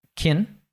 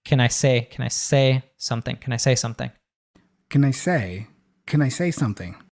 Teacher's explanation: But he doesn't say, can I say something, which is how most people learn how to say it in school, right? But he reduces can to kin